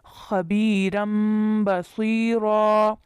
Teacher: یہاں تنوین کے ساتھ اقلاب کی مثال ہے، را کے اوپر تنوین ہے تو آگے با آیا ہے، اس لیے تنوین کی آواز کو میم کے ساتھ رن کے بجائے رم پڑا